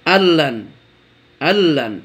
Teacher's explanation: আমরা সাইলেন্ট করেছি নুনটাকে যেন পড়িনি আমরা। কেন? কারণ সূত্র তাই বলে, নুন সাকিনের পর লাম এসেছে, ইদগাম হয়ে গেছে।